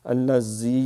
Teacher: تو باریک، بسم اللہ الذی، الذی کا لام باریک ہے، الذی یہ سیٹی نہیں مارنی کیونکہ یہ زال نرمی سے ادا ہوتا ہے، اس میں سختی اور سیٹی نہیں ہے